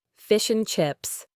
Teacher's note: and frequently becomes a quick N, as in fish and chips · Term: elision